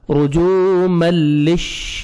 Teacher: کے بعد حروف یرملون جو 6 لیٹر ہیں ان میں سے لام آ رہا ہے تو یہاں پہ آپ نے ادغام کرنا ہے بغیر غنہ کے ساتھ